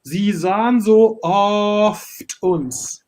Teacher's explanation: you have a long O, longer as in natural speaking way, because you say oft, but you have to sing oft uns. Então, a vogal é curta, aberta, mas como a nota é longa, você tem que sustentar mais esse som, apesar de ser uma vogal aberta, né?